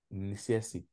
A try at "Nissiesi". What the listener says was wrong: Voilà, ne fais pas ne détache pas le N du S. CSI.